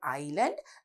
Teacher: When you write, you have to write the letter S. But when we pronounce the word island, we do not sound that letter S. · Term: silent letter